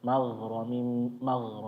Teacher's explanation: Kalau berlebihan nanti jadi kayak ko magh ya. Digesek ada gesekan aja di lunak-lunak sini bagian atas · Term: rakhawahnya